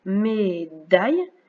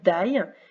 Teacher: la langue vient se mettre derrière les dents à la deuxième syllabe. Daille, elle fait bien le son de.